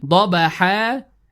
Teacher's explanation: We notice that here the word would end with tanween with fatha, and we stop that we compensate the tanween with an alif mad for 2 counts